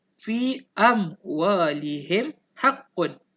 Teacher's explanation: kita kena sebut huruf mim mati itu bagi jelas. Sebut huruf mim mati itu bagi jelas. Mulut kena rapat. Dan tak payah dengung. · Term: izhar syafawi